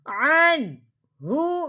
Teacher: آگے ہا ہے، ہا حروف ہلکی میں سے ہے، یا تا حروف ہلکی میں سے نہیں تھا، یا ہا حروف ہلکی میں سے ہے، اس لیے اب ہم نے نون ساکن پہ اظہار کے ساتھ پڑھا جائے، نون ساکن کو اب ہم نے اظہار کے ساتھ پڑھنا ہے بغیر غنّے کے، غنّہ نہیں کرنا، اظہار کے ساتھ پڑھنا ہے۔